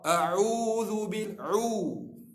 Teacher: huruf ain, huruf tawassut, dia tak keras, dia tak lembut.